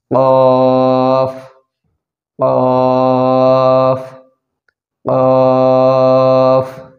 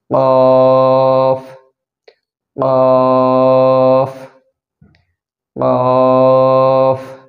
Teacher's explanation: লক্ষ্য রাখবেন যেন আপনারা আপনাদের উচ্চারণটা জিহ্বার গোড়া থেকে উচ্চারণ হয় জিব্বার গোড়া থেকে এই হরফটি উচ্চারণ হয়